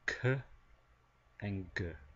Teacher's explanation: We have velar, k and g, meaning closer to the back of the mouth.